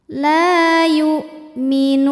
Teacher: Sebab ada alif didahului harokat fathah. Cara bacanya panjang lamnya 2 harokat. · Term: mad tabi'i dhahiri